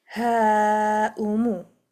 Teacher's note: This is mad muttasil, and we can stretch it for 4 harakat, 4 or 5 harakat long.